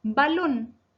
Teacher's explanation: la palabra aguda es balón, porque se acentúa en la última sílaba lon y va con tilde porque termina en la consonante N.